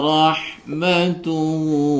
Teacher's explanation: Ro dibaca tebal karena ada ro yang berharokat fathah